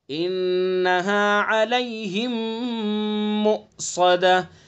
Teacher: میم کے بعد دوسرا میم تو غنہ کریں گے